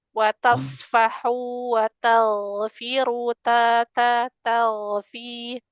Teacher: Huruf ta huruf ta jangan ditebalkan.